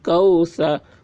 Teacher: سا کے اوپر زبر ہے، زبر کو جلدی پڑھیں، تھوڑا بھی نہ کھینچیں